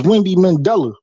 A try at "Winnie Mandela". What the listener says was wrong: Winnie. There's no D.